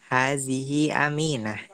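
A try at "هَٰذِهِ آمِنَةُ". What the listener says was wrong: Ini alifnya panjang nih. Karena kalau gini panjang nih.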